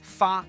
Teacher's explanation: people from Hunan may pronounce Hunan as Funan or Hua as Fa